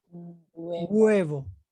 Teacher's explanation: It's like the H get cut off and you pronounce the next vowel. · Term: the H is mute